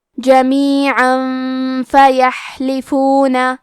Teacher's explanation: ہم تنوین کو چھپاتے ہوئے اور غنہ کے ساتھ یہ حکم کو ادا کریں گے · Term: اخفاء